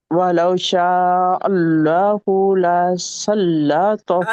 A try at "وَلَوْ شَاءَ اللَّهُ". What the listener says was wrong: اللہ نہیں ہوگا، ہو کو چھوٹا رکھے، لو کو چھوٹا رکھے، وَلَوْ شَاءَ اللہ،